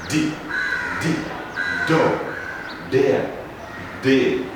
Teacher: voiced so the vocal parts really do vibrate